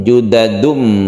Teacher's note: namakan ini adalah iqlab tanwin bertemu dengan baik artinya membalik artinya suara dari tanwin ini menjadi mim mati menjadi m asalnya itu hurufnya menjadi Om juddadhum dan kita panjangkan